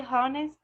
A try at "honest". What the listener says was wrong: Okay, it's not honest, it's honest. Honest. También es muda ahí. Honest. Like the Mexican, well, the Spanish, not the Mexican.